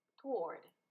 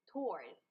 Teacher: We begin with a t sound. And since it's the beginning, it's a strong aspirated T.